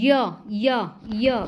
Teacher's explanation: कि य का उच्चारण स्थान य य य बोल के देखो य जो है वो तालू से बोला जाएगा ना होठों से ना मुर्दा से ना दांतों से